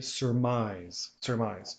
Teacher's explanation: make sure in surmise that the accent will go on the second syllable